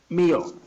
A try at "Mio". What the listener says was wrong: It's a short E. No.